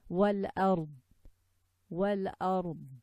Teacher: we have to make sure that we don't let go of the tongue at the end, because it sounds like a dal. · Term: Al-Istitalah